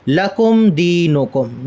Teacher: میم ساکن کو ظاہر کر کے پڑھیں گے، غنہ نہیں ہونے دیں گے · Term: اظہار شفوی